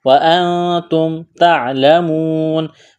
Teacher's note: نون ساکن کے بعد تا ہے, حروف اخفا ہے, آواز ناک میں چھپائیں گے, غنہ کریں گے. وَأَنْتُمْ تَعْلَمُونَ واو مدہ ہے یعنی واو ساکن سے پہلے پیش ہے, حروف مدہ واو ہے تو ایک الف کے برابر کھینچنا ہے.